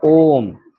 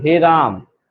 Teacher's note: प्लुत स्वर जिसको कहते हैं जिसको उच्चारण करते समय हमको लगभग तीन मात्रा का हमको टाइम लगेगा